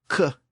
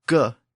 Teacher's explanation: In fact, mechanically, both sounds are produced pretty much the same way. The K sound, k, is an unvoiced sound, and the hard G sound, g, is a voiced sound.